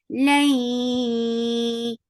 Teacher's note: idgham with gunna, so keep the sound in your nose for a longer time